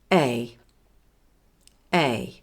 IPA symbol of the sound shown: eɪ